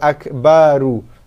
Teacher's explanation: ra dhammah berbaris depan, dibaca dengan tafkhim tebal